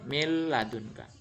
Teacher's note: Jadi kalau nun mati atau tanwin bertemu dengan huruf lam atau ro, maka tidak didengungkan. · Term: idgham bila gunah